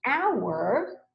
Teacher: when you say hour, in this case, right, it's not making the H sound, it's making a vowel sound. In this word, in hour, the H is silent, right?